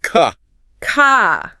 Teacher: in British English, that R at the end of the word often softens or disappears completely. So, car becomes more like ca ca.